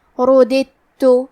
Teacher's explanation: ہم یہ دال کو تا میں ملا کے صرف حرف تا اور تشدید کے ساتھ پڑھیں گے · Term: ادغام